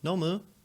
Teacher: nomu, you know, with the rising intonation. It's like, will you, and it's very casual by the way, but will you drink?